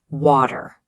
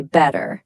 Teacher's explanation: That T in the middle becomes a soft D sound. We call it a flap T. But in Indian English, it stays a hard T.